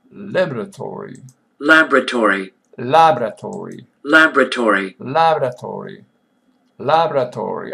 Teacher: 4 syllable, and there is accent on first syllable.